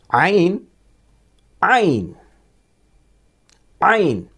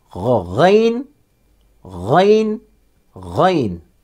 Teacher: عین غین، یہ دونوں حروف گلے سے نکلتے ہیں. عین گلے کے بیچ والے حصے سے اور غین گلے کے شروع والے حصے سے نکلتا ہے